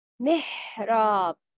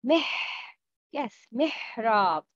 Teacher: Hams means you can hear the sound of press when you pronounce letter ha. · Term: همس